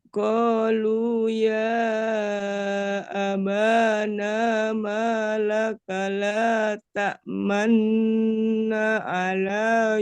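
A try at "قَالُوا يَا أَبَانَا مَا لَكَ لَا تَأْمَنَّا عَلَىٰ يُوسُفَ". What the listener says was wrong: naknya kurang sedikit. Na, ala.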